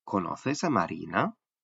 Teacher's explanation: Por ejemplo, si hacemos una pregunta como ¿conoces a Marina? La sílaba ri de Marina se realiza en un tono bajo